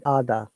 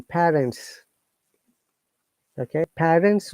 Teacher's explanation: in british english we do not pronounce letter r in most of the cases